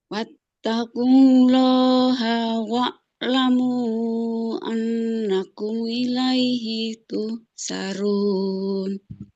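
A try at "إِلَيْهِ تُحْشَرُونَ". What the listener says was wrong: Jangan tuhsarun. Huruf shin ya. Tengah lidah menempel ke langit-langit atas. Ilaihi tuhsyarun.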